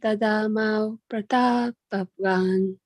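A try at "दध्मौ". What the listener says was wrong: Dadmo. Say Dadmo. Dadmo. Dadmo, right? There's no A here, right? So that there'll be no emphasis there at all. Dadmo.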